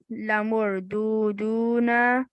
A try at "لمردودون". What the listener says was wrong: لمر. There's a فتحة.